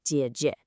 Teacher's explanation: Do you hear how short and light that second syllable is? That right there is your neutral tone trick. · An older sister with a dipping third tone